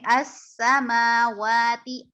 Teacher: اس سیٹی کی آواز ہے سین میں